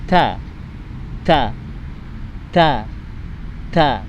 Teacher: huruf ta, makhrijul hurufnya adalah ujung lidah diletakkan di gigi atas bagian dalam.